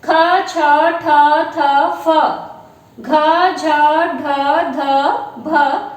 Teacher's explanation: वो व्यंजन आ जाएंगे जिनका उच्चारण करते समय वायु जो है हमारे मुख से अधिक निकलती है, ज्यादा निकलती है, तो वो महाप्राण ध्वनियां कहलाती हैं।